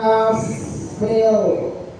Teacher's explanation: ada fa sukun harus dibaca hamas, artinya hamas mengalirnya nafas